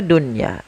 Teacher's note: satu kata maka ia tidak dibaca dengan bacaan Idgham akan tapi kita membacanya dengan bacaan izhar mutlak yaitu suara nunnya harus dibaca dengan jelas